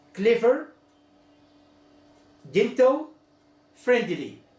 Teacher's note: the stress in the first syllable